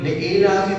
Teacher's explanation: لإیلاف میں ای اور لا کو برابر لمبا کرنا ہے. لإیلاف پہلے لی کو لمبا نہیں کرنا, اس کے نیچے زیر ہے.